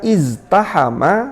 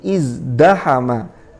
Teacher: terpengaruh za yang memiliki sifat jahr, lalu dia berubah menjadi dal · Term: asimilasi langsung